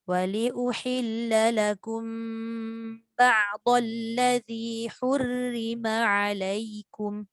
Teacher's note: Jadi bila sambung, pastikan mim bertemu ba tu dengung